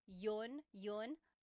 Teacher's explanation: You might hear me saying yun as if there's no I and that's commonly how it's pronounced. You might hear people say but usually the letter I sound is dropped.